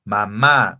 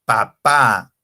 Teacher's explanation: utilizamos el labio superior y el labio inferior para pronunciar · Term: fonemas bilabiales